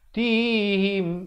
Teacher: Tihim idhar syafawi, sempurnakan saja mim mati, jangan dipanjangkan.